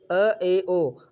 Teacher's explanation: अ ए ओ अर्धविवृत स्वर है